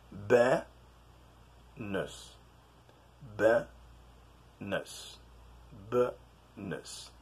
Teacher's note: The first and the last syllable of the word is they are pronounced like schwa